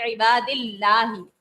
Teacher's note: پھر اللہ تبارک و تعالیٰ کے لام سے پہلے زیر ہے تو یہاں پر باریک پڑھیں گے